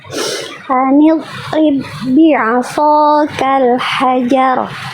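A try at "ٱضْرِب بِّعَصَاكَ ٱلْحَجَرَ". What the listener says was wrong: Oke, jadi dotnya sebenarnya udah bagus. Cuman itu tadi sifat rokhawahnya belum tertunaikan dengan maksimal. Jadi salah satu kesalahan dot sukun itu, poin kedua, suara huruf dotnya terputus.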